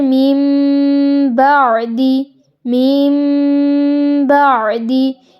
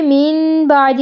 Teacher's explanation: اگر تو تنوین کے بعد آ رہا ہے تو نون کی آواز، تنوین کی جو نون کی آواز ہے جیسے ان، تو اس نون کی آواز کو میم میں بدل دیا جائے گا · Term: اقلاب